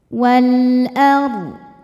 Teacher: alif lam menghadapi huruf qamariyah yaitu hamzah. Cara bacanya dibaca jelas. Wal ar. Ro sukun dibaca tafkhim karena didahului baris fathah ro sukunnya, maka ro-nya tebal. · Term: alif lam qamariyah